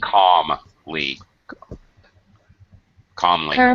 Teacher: The L in calmly is silent. All right. When you see this LM thing, calm, palm, the L is silent.